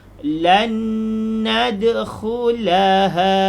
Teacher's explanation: Untuk nun mati bertemu dengan nun, bunyi dia tidak ada perubahan, cuma ditahan. Sebab nun mati bertemu dengan nun, jadi bunyi tetap bunyi nun. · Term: idgham bihuna